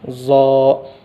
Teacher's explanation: ज़बान की नोक को सामने दांतों के ऊपर के जड़ों में लगाकर मोटा पढ़ना